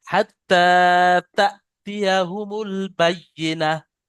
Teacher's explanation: ইয়ার উপরে তাজদিদ, ইয়ার ডবল উচ্চারণ করবেন।